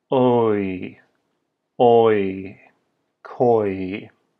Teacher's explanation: For koi, the oi sound in English, you can take the vowel o and follow it with e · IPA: /oi/